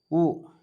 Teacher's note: சில எழுத்துக்கள் வாயைத் திறந்து ஒலித்தாலே ஒலிக்கும் ஆ வாயை திறந்தாவே வந்துருது உ இதழ்கள் குவிகின்ற பொழுது உ இடம் வருகிறது